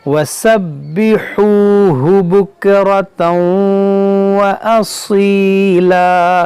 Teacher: स्वाद है सीन नहीं है, इसको असीला पढ़ें मोटा करके